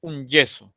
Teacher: se cierra el conducto aquí se hace la oclusión y luego explota en la fricción